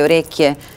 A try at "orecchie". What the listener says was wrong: No. Orecchie. Orecchie con la O. Non nerecchie. Nerecchie, no. Orecchie.